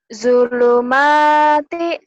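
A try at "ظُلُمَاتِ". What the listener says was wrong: Zo-nya kurang rapuh. Dibacanya pakai Z. Z-H-O. Zo. Zulumati. Zulumati.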